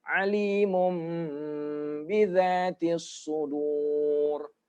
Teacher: Mum, dua harokat didengungkan.